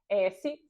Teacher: não existe vibração das cordas vocais então não tem voz